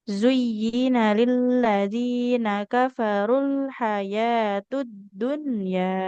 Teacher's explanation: Rnya enggak boleh panjang. Walaupun dah ketemu wau, tapi kan di depannya ada alif lam jadi enggak panjang.